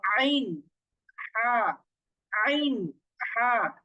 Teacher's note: প্রথমে যে কণ্ঠনালীর শুরু, এরপর মধ্যখান মানে হচ্ছে গলার একেবারে মধ্যখান। গলার মধ্যখান থেকে একটু শক্ত করে উচ্চারণ করব,